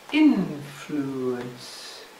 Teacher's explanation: 'influence': three syllables 'influence', stressed on the first syllable